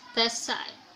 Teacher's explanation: In a rapid speech, usually native speakers say the word that side to become the side, that side. So the plosive th becomes fricative s, so it is pronounced the side, the side. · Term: assimilation of manner